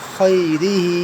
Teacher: ہاں کے نیچے کھڑی زیر ہے، ہم اسے کھینچیں گے